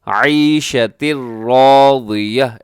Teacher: ادغام ہو رہا ہے بغیر غنے کے، یہاں نون کی آواز نہیں آئے گی